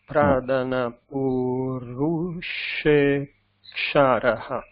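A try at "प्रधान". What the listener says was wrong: Here the pradha again, dha. But pradha, note that it's a aspirate with the mahaprana. The breath has to come out when we say dha, pradha.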